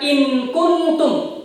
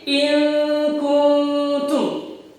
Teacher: nunnya dibaca samar, tidak jelas dan juga tidak berdengung